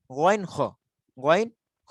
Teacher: 3 নম্বর মাখরাজ হলকের শেষ হইতে গইন খ